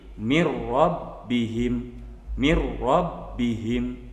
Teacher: cara membacanya di idghomkan dimasukkan tapi jangan disertai dengan dengung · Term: idgham bilagunnah